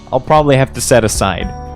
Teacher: the two reduces to a t sound and links to have · the v in have morphs to an f sound in order to link more easily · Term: connected speech